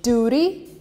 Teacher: in america where place t with an r duty you almost say it with an r in british it stays as a t duty by the way